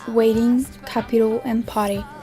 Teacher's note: replacing an intervocalic T or D with a quick voice tap of the tongue against the alveolar ridge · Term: Flapping